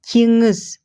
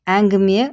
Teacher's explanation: Следующий звук По написанию похож на букву Н, но задействованы задние части гортани. Носовая часть. Звук уходит через нос.